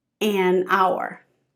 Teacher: Both of them start with the consonant "h" but "a hat", "an hour" because the h in hour is silent and so the word begins with a vowel sound "ou". But hat, it has the consonant h pronunciation.